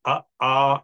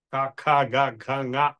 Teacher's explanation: అ ఆ అనేది కంఠం నుంచి డైరెక్ట్ గా వస్తాం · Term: కంఠ్యాః